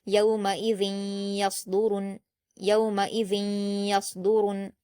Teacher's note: صاد پر جزم ہے، بنا قلقلہ کے یا کو صاد سے ملا کر پڑھیں گے، صاد کو پر پڑھیں گے کیونکہ یہ حروف مستعلیہ میں سے ہے